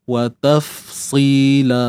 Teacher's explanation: Untuk sad ni, nak sebut dia, kena angkat pangkal lidah. Untuk dapatkan sifat tebal lah.